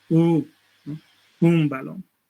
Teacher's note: Un baón, tres sílabas. Cuando aparece al final de sílaba, la vocal precedente se nasaliza. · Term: nasalización vocálica